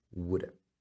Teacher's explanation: Would, você pode colocar assim, would have, pode falar com o som do V, would have, e você pode falar woulda.